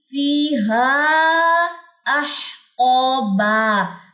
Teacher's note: ہا کے اوپر کون سی مد ہے؟ مد منفصل ہے، 4 سے 5 سیکنڈ یہ لمبی ہوگی، فیہا احقابا، الف مد اور یہاں پہ بھی دو زبر کا وقف آ جائے گا۔